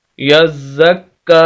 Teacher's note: शद वाले लफ्ज़ को सख्त करके और आवाज़ को हल्की से रोक कर हम पढ़ते हैं